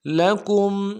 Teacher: گے، جند لکم اگل لام کو نرم سے ادا کرنا ہے، کاف کو میم ساکن کے ساتھ ملانا ہے، میم ساکن میں غنہ کریں گے · یا کو نون کے ساتھ ملانا ہے، نون ساکن غنہ کریں گے